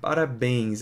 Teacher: Aqui eu tenho um som nasal provocado pela letra pela consoante N. Então, ele naszalizou.